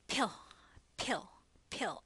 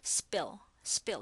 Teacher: P becomes extra aspirated you hold up a little tissue paper and it will blow when you say pill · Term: extra aspiration